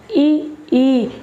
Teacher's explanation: जब हम ई बोलते हैं तो जो हमारी जीभ है वो तालु की तरफ जाती है। बोल के देखिए अच्छी तरह से, ई हल्का ऊपर उठेगी, समझ गए, तालु की तरफ जाएगी तो ई क्या हो जाएंगे, तालव्य।